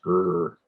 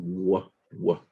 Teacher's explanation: Muchas veces los niños que tenemos la R retrofleja en inglés. Elevamos el dorsum de la lengua, después hacemos una curva con el ápice de la lengua para hacer R. Requiere un movimiento del dorsum y también de la frente de la lengua.